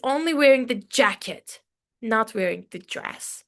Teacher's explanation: I wanted to stress the word jacket, right?